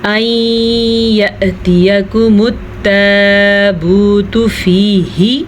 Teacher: این یأتیکم، نون ساکن کے بعد یمون میں سے یا آیا ہوا ہے تو نون ساکن کو ہم ملا کے پڑھیں گے اور غننے کے ساتھ پڑھیں گے